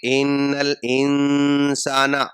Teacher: مطلب ناک میں آواز کو چھپا کر پڑھیں گے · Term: اخفا